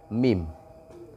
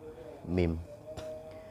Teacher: Yang bergerak adalah bibir, mim. Kemudian bibir yang atas dan bibir yang bawah itu ketemu ketika menyebutkan huruf mim.